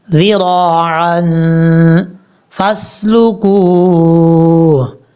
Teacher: یہاں پر عین کو کلیئر کرنا ہے اور ذال کے بعد جو را ہے یہاں پر را کو پر پڑھنا ہے